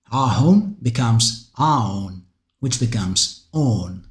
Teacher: Mycenaean Greek also retains the h in words such as theoi, as well as in the genitive plural ending ahon, which in Homer appears as aon. The h later becomes silent, leading to vowel contractions.